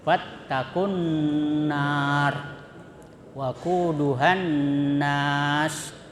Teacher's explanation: nun bertasdid itu disebut gunnah. Ya, gunnah itu mendengung, wajib.